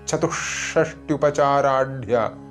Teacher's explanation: ചൊല്ലുമ്പോൾ ശ്രദ്ധിക്കേണ്ടത് ചതു കഴിഞ്ഞ് വിസർഗം, അതിനുശേഷം ഷാ വരുന്നത് കൊണ്ട് ഷാ ദ്വിത്വമായിട്ടാണ് ഉച്ചരിക്കേണ്ടത്. അതായത് ഇരട്ടിച്ച് ഉച്ചരിക്കണം. ചതുഷ്ഷ്ട്യുപചാരാഢ്യ ഷ എന്നുള്ളതിനൊന്ന് സ്ട്രെസ് കൊടുത്തുകൊണ്ടാണ് ജപിക്കേണ്ടത് അല്ലെങ്കിൽ ഉച്ചരിക്കേണ്ടത്.